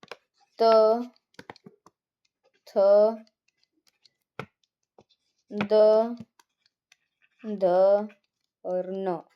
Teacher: त वर्ग में हमारे त, थ, द, ध और न, जिनका उच्चारण स्थान दांत, जिनको दांतों से बोला जाता है, और इनको नाम दिया गया है दंत्य।